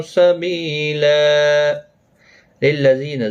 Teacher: زی یا مدہ ہے، ایک الف کی مقدار کے برابر کھینچیں گے